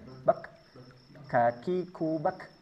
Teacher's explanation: Hamasnya huruf kaf ini hanya sekedar percikan sama dengan huruf ta. Bak jadi tidak mengalir begitu panjang seperti huruf sin. · Sekarang kita akan bahas sifatnya satu persatu. Huruf kaf sifatnya dari segi nafas dia bersifat hams. Artinya harus ada nafas yang keluar.